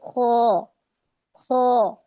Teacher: جب ہم پڑھیں گے خو خو تو پیچھے سے زبان اٹھ رہی ہے ہماری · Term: ہیوی لیٹر